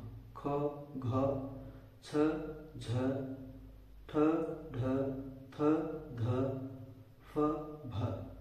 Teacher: जिन ध्वनियों के उच्चारण के समय हकार की ध्वनि सुनाई पड़ती है उन्हें महाप्राण कहते हैं